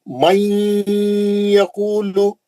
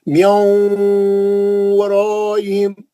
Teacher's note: ये गुन्ना करते टाइम में इसको 2 हरकत से करना है। हाँ, गुन्ना 2 से 3 हरकत लंबा करना।